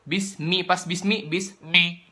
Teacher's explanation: itu kan pas mi-nya itu masuk hidung karena cuma 2 huruf doang yang boleh pakai suara hidung, yaitu nun sama mim.